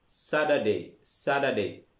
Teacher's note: Tida anaga British ka T ugu dhawaaqayo, American ka D ahaan ugu dhawaaqa